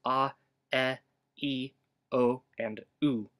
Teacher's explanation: we know there's an open vowel, a mid-frontal one, a close frontal one, a mid-rounded back one, and a close rounded back one. In other words, pretty similar to the English sounds ah, e, o, and u.